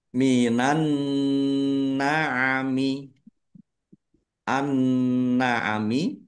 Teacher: Nun tasdid dibaca hunah atau mendengung, ditahan biar tampak mendengungnya.